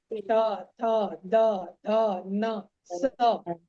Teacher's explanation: दांत में आपका जीभ सटेगा ही सटेगा, है ना। त, थ, द, ध, न, स, चाहे ऊपर के दांत से सटे या नीचे के दांत से सटे, आपका सट नहीं सकता, टच करना ही है जीभ को उससे। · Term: दंत्य वर्ण